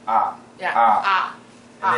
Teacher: it's a midlevel tone and it's short it's very very short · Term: four tone